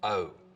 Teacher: starts with the tongue further forwards in the mouth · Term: goat